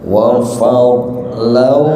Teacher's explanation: digabungkan karena tanwin bertemu wawu. Nah, kalau tanwin bertemu wawu itu idgham bi gunna.